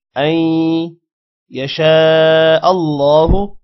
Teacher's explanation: حمزہ کے بعد یا ہے غنہ کریں گے ان یشاء اللہ اللہ کا نام موٹا ہوگا